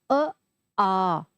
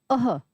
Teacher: जब हम विसर्ग या फिर क वर्ग के वर्ण या अ या आ का उच्चारण जब हम करते हैं तो ध्वनि कहां से आती है कंठ से